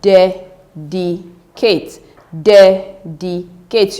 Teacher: You're going to increase your voice, that is the pitch in your voice when you get to the first syllable. Dedicate, which means the first syllable right here is stressed.